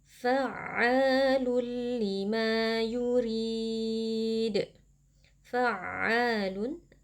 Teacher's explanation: Di sini terdapat mad tabi'i karena ada alif yang sebelumnya berharokat fathah dibaca panjang 2 harokat. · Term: Mad thobii